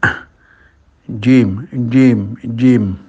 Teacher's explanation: Makhrajnya di tengah lidah dengan langit-langit atasnya dengan cara menaikkan tengah lidah itu ke arah langit-langit.